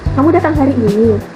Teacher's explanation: di akhir kalimat nadanya itu turun